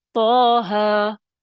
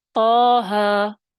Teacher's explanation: طٰہٰ ایک الف کے برابر، کیونکہ یہ 2 حرفی ہیں، سبب مد موجود نہیں ہے